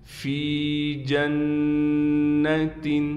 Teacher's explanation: نون مشدد ہے، نون پر ایک الف کی مقدار غنہ کیا جائے گا، یعنی ناک میں ہم آواز کو لے کر جائیں گے